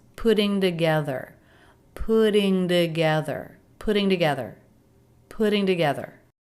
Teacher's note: These T's flap T's between two vowels.